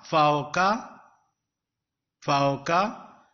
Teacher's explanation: waw is pronounced in a lean sound, means layyan lean sound, mild sound, light sound. Fe zabar waw faw, kaf zabar ka, faw ka, he zabar alif ha, faw ka ha.